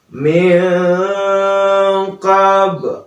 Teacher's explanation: Kemudian ada hukum nun mati bertemu dengan qaf, min qab. Nah, itu ikhfa ya.